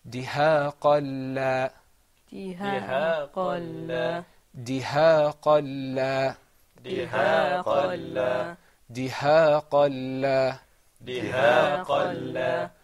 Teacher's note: when you have a lam, there's no ghunna. So we're not going to draw out the sound.